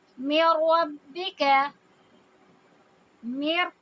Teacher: ہیں، تو ہم میم کو سیدھا را سے ملائیں گے اور ہم نے اس میں کوئی آواز لمبی نہیں کرنی، کوئی نیزل ساؤنڈ نہیں کر رہا، صرف ملانا ہے اور را ہیوی کرنا ہے · میم کو میں را سے ملا رہی ہوں، نون سے نہیں ملا رہی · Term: ادغام